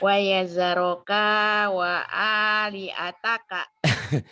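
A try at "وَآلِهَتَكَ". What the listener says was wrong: Ibu kalau hatuk ke wali A, bukan wali A Bu, wali H. Wa aliha. Ini kanya pendek ya Bu ya.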